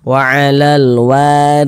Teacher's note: ro nih Ni baris satu ke bawah nih tanda baca kasrah huruf ro yang memiliki tanda baca kasrah dibaca tipis baca tarkik sehingga pangkal lisan kita itu tidak naik terangkat ke atas